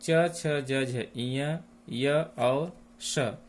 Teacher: च, छ, ज, झ, इय, य और श तालु से उच्चारित होते हैं, इसलिए ये तालव्य वर्ण कहलाते हैं।